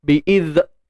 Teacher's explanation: Okey, hujung lidah keluar bagi huruf zal ni. Kemudian rokhawah. Lepaskan suara. Jangan tahan. Bi'iz. Jangan bi'iz.